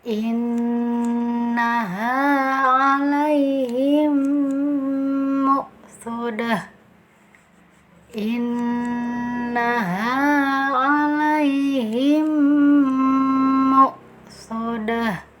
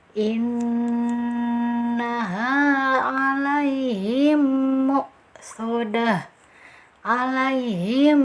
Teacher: Nah, kita sempurnakan tasydidnya. Nah, sempurnakan tasydidnya kepada mim yang kedua, kemudian beri gunah atau dengungan selama 2 atau 3 harokat